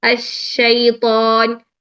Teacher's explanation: شین کا مخرج وسط لسان اوپر وسط تالو کے ساتھ پاس قریب لے کر جائیں, تھوڑی سی اس میں اسپیس رکھیں, پورا ٹچ نہیں کرنا جیم کی طرح. · اگر آپ اس کو پوری تفشی کو ادا نہیں کریں گے تو وہ سین بن جائے گا